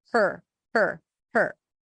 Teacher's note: no vowel between the H and the r